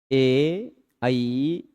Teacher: इसमें कंठ और तालु दोनों का प्रयोग है।